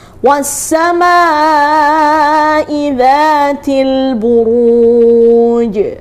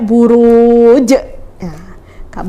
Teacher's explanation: ketika mati di akhir ayat atau sukun di akhir ayat ya maka dia namanya qolqolah kubro artinya apa pantulannya harus lebih kuat